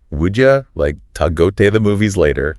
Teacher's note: would you becomes would ya, to is like ta, and the like disappears before movies